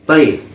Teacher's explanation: اعطینا، عین پر جزم ہے، اور جزم والے حرف کو پیچھے حرکت والے حرف سے ملا کر پڑھتے ہیں، جیسے حمزہ عین زبر آ، تو ملانے میں نرمی بھی ہوگی اور جلدی بھی ہوگی۔ طیب، یا ساکن سے پہلے زبر ہے، یا لین ہوا، یا لین کو نرم آواز کے ساتھ جلد پڑھیں گے، معروف پڑھیں گے، مجہور آواز سے بچیں گے۔